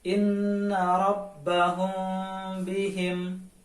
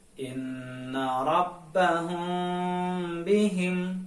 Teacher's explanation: harus dibaca samar-samar di bibir dan didengungkan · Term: Ikhfa Syafawi